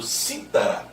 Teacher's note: E aí a sílaba tônica é a terceira de trás para frente.